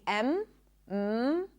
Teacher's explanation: as you close the lips and the air comes out through the nose. If you grab your nose, you'll feel the vibrations. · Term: nasal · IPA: /m/